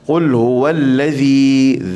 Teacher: alladzi hujung lidah hujung gigi